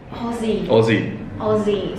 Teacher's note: So you don't say Aussie with an S, it's a Z. It's a Z sound, yeah.